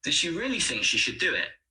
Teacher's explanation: here really think and do are stressed does and should are weak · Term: sentence stress